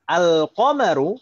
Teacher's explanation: Ah, al-qamaru, tadi lamnya terbaca jelas, idhar.